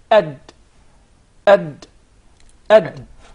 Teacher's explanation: So the Dal is pronounced from the top side of the tip of the tongue.